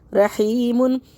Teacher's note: ہا کو حلق سے نکال کے پڑھیں گے ، رحیم، پیچھے سے پڑھیں گے ان اللہ غفور رحیم۔